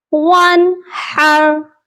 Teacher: وانحر، اس والے نون پر اظہار ہوگا